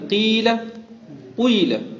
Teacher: کسرہ پڑھتے پڑھتے ہونٹوں کو گول کر دینا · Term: کسرہ مشابہ ضمہ